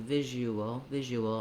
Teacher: You won't see it in the dictionary in the IPA, and you don't need to pronounce it intensely, not you wool. You don't have to fully close the lips and release them, but just naturally link those two, visual, and you'll hear a little bit of a w sound. · Because I'm moving from the oo, the rounded sound, to the unrounded schwa, ooal, you can hear how there's a little bit of a W gliding happening there. That's simply because we use vowel to vowel linking here, where we're moving from a rounded to unrounded vowel.